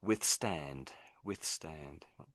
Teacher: So, I think the emphasis on the first part and it gets a bit quiet as you go on.